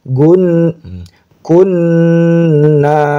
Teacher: nun bertasydid ingat harus dibaca gunah ditahan